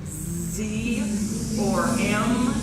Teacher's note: If you put your hand on your larynx and you go Z or M, you can feel it buzzing. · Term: voiced consonants